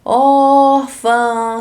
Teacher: se for chamar alguém é o or é a sílaba mais prolongada então a sílaba tônica é o or